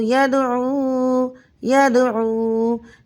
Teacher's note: یومن یوم، قاف واو زبر قو، لام دو پشلون، قول قول، یسقون یسقون، یا دال زبر ید، عین واو پیش عو، یدعو یدعو۔ اس کلمے میں دال ساکن حالت میں کلمے کے درمیان میں آ رہا ہے، تو یہاں قلقلہ صغرا ہوگا · واو لین کی طرح نرمی اور جلدی سے نہیں پڑھیں گے بلکہ ایک الف کے برابر کھینچ کر پڑھیں گے۔ وقف میں کوئی تبدیلی نہیں ہوگی، وقف بنے گا وقف میں سکون۔ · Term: واو مدہ